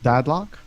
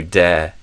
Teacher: you're opening the vowel, so it sounds like you're saying dad, like pie, instead of dead, like mortu.